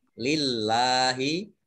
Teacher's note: Kemudian Allahnya ada fathah berdiri. Ini dibaca panjang 2 harokat.